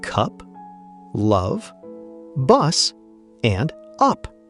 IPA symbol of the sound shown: ʌ